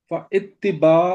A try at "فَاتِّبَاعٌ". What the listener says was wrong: پا کے الف کے نیچے زیر نہیں ہے، فتباع،